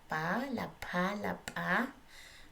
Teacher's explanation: La P bilabial oclusiva simple